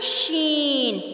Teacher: شین میں ایک صفت ہے تفشی، یعنی آواز پھیل جاتی ہے